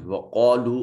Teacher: قاف کو موٹا کر کے پڑھیں گے، یہ حرف استعلاء ہے، اس میں صفت استعلاء پائی جا رہی، حرف مستعلیہ ہے۔